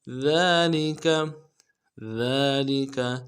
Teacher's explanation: ذال کو باریک کریں گے، ذال کے اوپر کھڑا زبر ہے، ایک دال میں کھینچیں گے